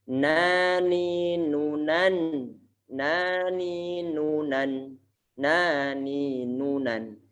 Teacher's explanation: huruf nun itu makhrajnya ujung lidah ditempelkan ke gusi bagian atas.